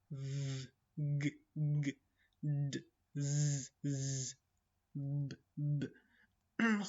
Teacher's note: Ovoz paychalari, un paychalari qimirlayapti. Mana shundan jarang hosil bo'ladi, vibratsiya hosil bo'ladi. Jarangsizlarda esa vibratsiya bo'lmaydi. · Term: jarangli